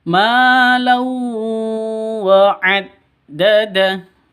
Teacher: Lau wa'addada, tanwin bertemu dengan wawu. Cara bacanya masuk ke wawu disertai dengung dua ketukan karena idgham bi gunnah.